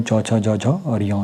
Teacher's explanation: वे वर्ण जिनका उच्चारण जीभ के तालु यानी कि कठोर तालु से स्पर्श करने पर होता है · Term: तालव्य वर्ण